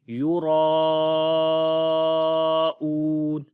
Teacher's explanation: کے اندر، تو وہاں پر مد متصل ہوتی ہے، یعنی کہ بڑی مد جس کو ہم 3 سے 5 سیکنڈ لمبا کرتے ہیں